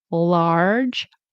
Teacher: Remember the R J sound. It's a J sound. Be careful if you speak Spanish. It's not a Y sound.